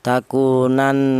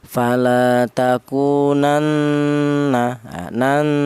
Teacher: Yang benar itu dibaca dengung, panjangnya dengung itu 2 ketukan. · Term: gunnah